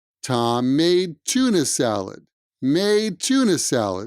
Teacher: the d sound at the end of made and the t at the beginning of tuna kind of mushed together